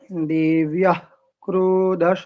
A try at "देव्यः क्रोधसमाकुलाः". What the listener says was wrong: हम आप हर में म क्यों बोलते हैं? म कुलाहाम आप बोल रहे हैं, रूढ़ाम आप बोल रहे हैं।